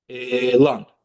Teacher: elan e daha uzun müddət deyilir, amma ikinci heca tez və kəskin deyilir. Deməli, vurğu ikinci hecanın üzərindədir.